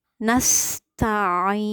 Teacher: Nasta'in, benar-benar keluar dari tengah tenggorokan.